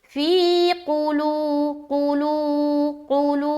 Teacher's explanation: آگے فی قلوبہم العجل، فی میں یا مدہ کر رہے، فی قلو، قاف پیش قو، لام وا پیش لو، فی قلو، لو میں کھینچیں گے، واو مدہ کریں گے، قو کو جلد ادا کریں گے